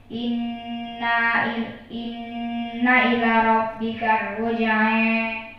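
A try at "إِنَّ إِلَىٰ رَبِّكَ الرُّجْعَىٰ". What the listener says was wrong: Jangan panjang-panjang banget. Ada ilahnya, ada mad.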